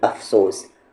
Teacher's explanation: پھر افسوس، افسوس کہنا ہے، اپ نہیں کہنا ہے، یعنی کہ اوپر کے دانت نیچے کے لپس میں ملائیں گے